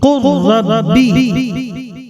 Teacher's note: لام ادغام کی صورت میں را بن جائے گا